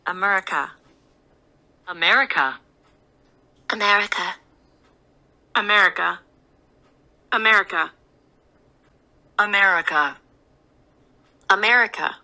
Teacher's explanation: America 할 때 이 첫 번째 소리가 바로 중성 모음 소리로 발음을 해요. America. 그리고 이 끄트머리 A자를 아자 소리를 안 내요.